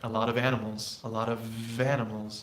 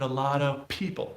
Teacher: i gotta link the f to the vowel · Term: linking